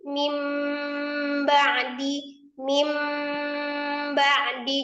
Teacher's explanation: ada nun sukun ketemu ba, maka dirubah nun sukun ini menjadi mim sukun. Disertai dengan gunnah. Karena iklab ini kalau dilihat dari tingkatan gunnahnya, maka dia masuk di dalam tingkatan gunnah yang kedua, yaitu kamilah. · Jadi nun sukun itu langsung diganti dengan mim sukun dengan tanpa memanjangkan mim kasrohnya ya. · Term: iqlab